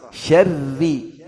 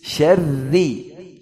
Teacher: Ri, ra tasydid kasrah. Syarri, tipis. Jangan syarri, syarr, syarri.